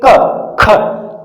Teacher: बोलते वक्त एक बार हमारी जो जीभ है वो धक्का खाती है पीछे कंठ के पास लग करके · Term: जीवा मूल्य वर्ण